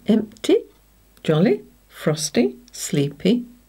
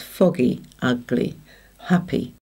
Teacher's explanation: over the years, the pronunciation for most people has changed to the long vowel sound E, so it's foggy, ugly, happy. · In some accents, it is closer to a short I sound, which is probably the way it should be pronounced